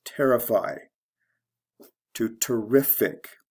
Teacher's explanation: because they all have the ic ending in the adjective form the stress goes from the first to the second syllable